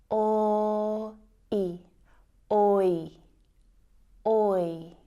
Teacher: the oi diphthong sound is actually made up of the o and I vowel sounds